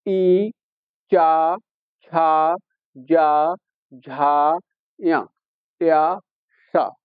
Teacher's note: जब यह वर्ण बोलेंगे तो हमारी जीभ तालु पर लगेगी। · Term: तालव्य वर्ण, तालब्य वर्ण